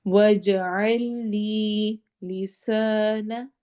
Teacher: عین کو ہم نے حلق سے ادا کرنا ہے